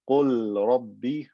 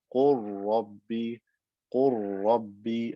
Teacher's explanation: So instead of saying qul rabbi, I say qur rabbi, qur rabbi. I merge the lam into the ra and it becomes one ra with shadda. Qur rabbi. So even though this is a lam in a verb, the rule of idghar does not apply because the ra is one of the letters that lam with idgham applies to.